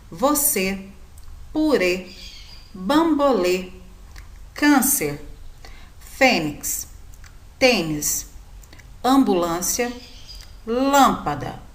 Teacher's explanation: da palavra e aqui temos várias palavras acentuadas com acento circunflexo durante a leitura vocês vão observar que o som dessa sílabas é um som mais fechado · vocês vão observar que o som dessas sílabas é um som mais fechado.